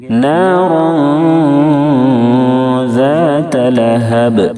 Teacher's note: را کے اوپر 2 زبر کی تنوین ہے، اس کے بعد حروف اخفا کے 15 حرفوں میں سے دال ہے اس لیے اخفاء حقیقی ہوگا یعنی تنوین کی آواز کو ناک میں چھپا کر غنہ کرتے ہوئے پڑھیں گے۔ نارا ذات لہب، ذال کی ادائیگی میں زا کی طرح سیٹی جیسی آواز نہیں نکلنی چاہیے، ذات اس طرح سے نہیں پڑھیں گے۔